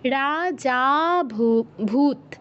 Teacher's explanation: রা যতটা দীর্ঘ করব যা তার থেকে বেশি সময় ধরে বলতে হবে